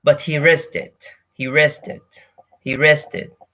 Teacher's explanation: So simply the K is dropped out.